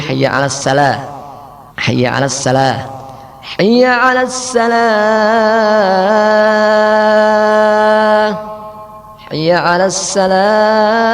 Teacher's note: Berikutnya membuat sin pada shad sehingga menjadi hayya 'alas salah